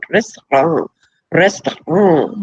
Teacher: We roll the R's, then it is a series of rapid taps.